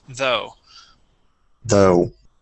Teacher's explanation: starting off with a voiced th and going to the o sound